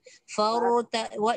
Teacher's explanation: walaupun ra ni tafkhim, dia ada satu sifat ra yang disebut tawassut, dia lembut.